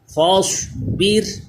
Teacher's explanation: را بھی باریک ہوگا کیونکہ زیر اصلی اسی کلمے میں را ساکن سے پہلے آ گیا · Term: را باریک